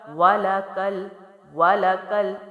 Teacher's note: کاف کی زبر کو ہم لام سے ملائیں گے کیونکہ لام ساکن ہے اور ساکن حرف اپنے سے پہلے متحرک حرف سے ملا کے ہی پڑھا جاتا ہے.